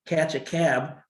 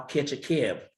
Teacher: The vowels are moving kind of up in front in the mouth. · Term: northern cities vowel shift